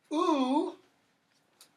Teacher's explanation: It's the highest you can go in terms of high back vowels.